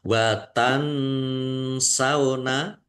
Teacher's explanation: nun sukun bertemu dengan huruf sin bacaan ikhfa dibaca samar-samar.